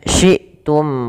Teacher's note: Kemudian syi'tum ragadaw, ada hamzah yang sukun di sini, harus suaranya ditahan dan suaranya harus nafasnya juga tertahan karena dia sifatnya ada 2, sifat jahar dan sifat syiddah